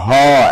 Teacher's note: আর কণ্ঠ নালীয় ধ্বনি যদি বলে একটা, হ, একদম কণ্ঠের নলের ভিতর দিয়ে চলে আসতেছে, হ একটা। আর নাসিক্য ধ্বনি যদি বল দিবে তাহলে হলো 3টা, ও দন্ত ন, ম।